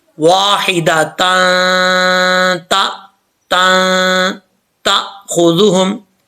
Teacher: اخفا ہوگا، یعنی ایک الف کی مقدار غنہ ہوگا، اس کی آواز کو ناک میں چھپا کے پڑھیں گے